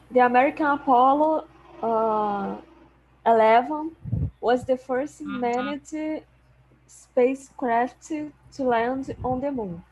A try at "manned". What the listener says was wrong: Manned. Manned. We don't pronounce this vowel here. We never pronounce that. So manned.